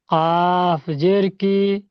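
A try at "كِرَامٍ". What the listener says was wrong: কফ, আপনি এরকম কফ এই গলা থেকে কেন বের করেন? মুখ থেকে বের করেন। কাফ, কাফ পুরো মুখ থেকে বের হবে। কাফ, কাফ।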